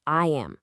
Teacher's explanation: a tiny little y sound just kind of sneaks in there to bridge the gap, turning it into a super smooth I am.